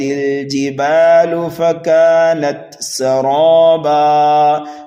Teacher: دو زبر کو ہم بدل دیں گے ایک الف سے، یہاں پر وقف بالابدال ہو رہا ہے